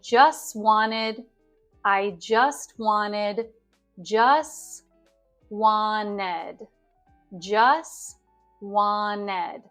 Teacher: if the t comes at the end of the word or in the middle of a word we often totally drop the T in the American accent